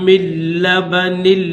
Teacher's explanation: تو یاد رکھنا یہ جو میم ہے اس میم کو ڈائریکٹ لام کے ساتھ ملائیں گے، اس نون ساکن کو نہیں پڑھیں گے